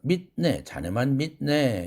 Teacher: 한국어에서는 이와 동일한 음성 환경에서 파열음이 영어처럼 코로 빠져나가지 않고 뒤에 있는 음이라는 비음과 동화되어 가지고 비음으로 발음되는 것입니다. 이 현상은 한국어에서 자음동화 현상이라고 그러는데 자음접변이라고 흔히 얘기하죠.